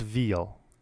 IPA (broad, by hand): vil